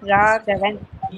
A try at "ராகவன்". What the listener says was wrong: இன்னொரு தடவை கொஞ்சம் அழுத்தி. ராக நாலாவது க. ராகவன். ராக அழுத்தாத சொல்றீங்க. மூணாவது கமரி. ராகவன். இன்னும் கூட அழுத்தலாம். நாலாவது எவ்வளவு அழுத்த முடியுமோ அவ்வளவு அழுத்தலாம். அந்த கா தான் எல்லாம். அந்த நாலு ராகவல சொல்ற நாலாவது காக்கு மட்டும் இல்ல, எனி லெட்டர் 4 நம்பர் போட்டிருந்தா எவ்வளவு அழுத்த முடியுமோ அழுத்தி கூப்பிடலாம்.